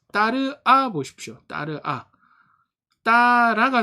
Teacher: 따라가 되죠? 그러면 으아가 붙었는데 으는 사라지고 아만 남았죠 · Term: 탈락